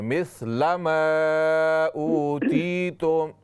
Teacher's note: लाम को लंबा न कीजिए